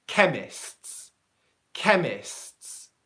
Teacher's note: What I'm doing is you hear the first S, then you hear a little pause, that's the T sound there. So what I'm not doing is saying chemists, chemists, where I'm using the beginning T.